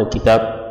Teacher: إذا وقفنا قلنا الكتاب، وإذا وصلنا قلنا الكتاب واعتنينا بقلقلة الباء